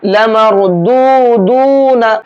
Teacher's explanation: را کو پر کریں گے اور یہاں پر دونوں دال کو کھینچ کر کے پڑھیں گے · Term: واو مدہ